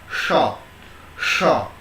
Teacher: make sure your tongue is bent upwards and touched to the cerebral part. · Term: cerebral sha